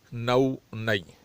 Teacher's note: نون کو اس طرح ادا کرنا کہ اس میں غنہ نہ ہونا پائے